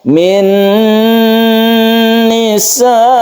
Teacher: Makanya disebut idgham bi gunnah. Membacanya kita dengungkan, kita panjangkan.